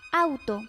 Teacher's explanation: A velar cuando se abre más la boca